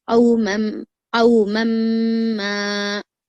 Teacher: मीम को जो है यहाँ पर कितना खींचेंगे आप, 4 हरकत के बराबर खींचेंगे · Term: गुन्ना